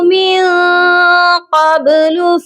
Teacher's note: یہاں پر آواز کو ناک میں چھپا کر پڑھا جائے اور با پر آواز کو ڈبل کیا جائے گا، مطلب یہاں پر ہم قلقلہ کر کے پڑھیں گے قبل، تو یہ کیسے پڑھیں گے؟